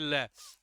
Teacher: ल के उच्चारण की बात करेंगे तो ये कहाँ से उच्चारित होता है, दंत की सहायता से उच्चारित होता है